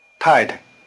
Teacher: The tones are falling neutral. The weak, short, neutral tone has a low pitch.